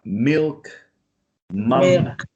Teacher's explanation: this like M, the bilabial nasal